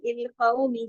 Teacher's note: कौ वावेलीन भी है, काफ मोटा भी पढ़ना है